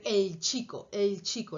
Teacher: Y la L también, cuando va antes de una che, va a ser el chico, el chico. La L ya está un poquito más atrás en preparación de la che.